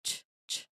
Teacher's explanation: And then quickly releasing it into a shushing sound. Like SH, it's a quick, sharp burst followed by friction. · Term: CH sound